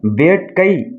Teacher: இறுதியிலும் வந்தா அது வந்து ஒரு மாத்திரையில குறைந்து ஒலிக்கும் இப்ப வேட்கை இப்ப கை என்பது கடைசில ஐ வந்திருக்கிறதுனால ஒரு மாத்திரை அளவுல ஒலிக்குது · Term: ஐகார குறுக்கம்